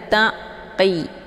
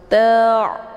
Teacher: Ta' ini ain, dia makhrajnya dari tenggorokan bagian tengah. Bacaannya lunak, jadi dibacanya bukan dengan cara ditekan.